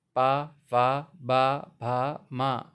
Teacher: इनका उच्चारण स्थान ओठ हैं। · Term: पा वर्ग